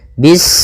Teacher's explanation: Pada bacaan bis ini, sempurnakan huruf sinnya. Ketika sinnya sukun, ini ada sifat saofir. Dia harus kita alirkan nafasnya. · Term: sifat shafir